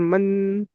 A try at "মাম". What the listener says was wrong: মান নয়, মাম। মিম মানে কি দুটো ঠোঁট এক জায়গায় চেপে ধরবে, মাম। জিভটা তো উপরে যে ঠেকছে না, মাম বলে দুটো ঠোঁট এক জায়গা হবে, মাম। মান নয়, মাম।